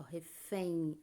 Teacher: É como se um i saísse da minha boca no final